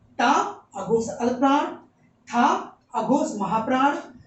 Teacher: ता अघोष अल्पप्राण, था अघोष महाप्राण और दा सघोष अल्पप्राण, धा सघोष महाप्राण